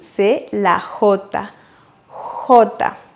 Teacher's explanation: En Amérique latine, on prononce le J comme si on faisait passer de l'air doucement. Le J, c'est la J.